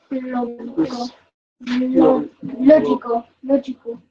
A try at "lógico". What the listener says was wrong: No ja, never ja. Lógico, right? Logical. Lógico because of the I. It's the soft sound.